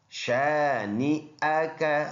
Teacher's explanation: یہ حمزہ ہے بیچ میں، شانئک، حمزہ کی آواز آنا چاہیے۔ بعض لوگ اس کو بغیر یعنی لا علمی کی وجہ سے پڑھتے شانئک، نیک، یہی حمزہ کی جگہ یا پڑھتے ہیں، تو یہ یا نہیں ہے بلکہ یہ حمزہ ہے، شانئک، شانئک، یہ غلط، شانئک۔